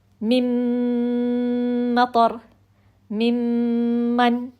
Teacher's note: میم ساکن کے بعد میم مشدد آیا تو نون کی آواز ڈائریکٹ ہمارے ناک میں چلی گئی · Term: مکمل غنہ